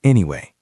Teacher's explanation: It goes down and then up.